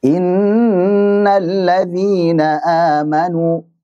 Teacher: Jadi yang panjang adalah nun tasydidnya, bukan inna. Itu maksud daripada wahdhar lima qablahuma an tamduda.